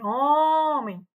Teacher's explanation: homem, a mais forte, o tônico, que é o on. E terminou em em, tá?